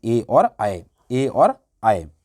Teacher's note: इसका मतलब क्या है, कंठ तालु हैं, कंठ और तालु दोनों से बोले जाते हैं